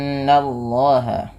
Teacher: Nun berharakat tasydid dinamakan dengan bacaan ghunah. Tahan dulu bunyi suara n ya sepanjang dua harakat